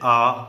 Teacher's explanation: विवृत स्वर कहलाते हैं। मतलब कि मुख द्वार जिसमें पूरा खुलता है उसे विवृत स्वर कहते हैं।